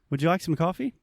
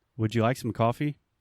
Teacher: we have a rising intonation which means it is going up at the end of a question